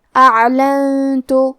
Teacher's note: تا حروف الاخفاء میں سے ہے اور اخفاء کا معنی ہے چھپا دینا، تو ہم یہ نون ساکن کو چھپاتے ہوئے لیکن غنہ کے ساتھ یہ حکم کو ادا کریں گے۔ اعلنت۔